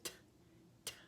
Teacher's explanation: when you say t, t, you can feel that the tongue is at the roof of the mouth. Another thing you can do, with clean hands of course, is you can scratch the very tip of your tongue with your nail. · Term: T sound